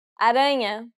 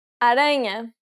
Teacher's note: the stress will be on the second to last syllable.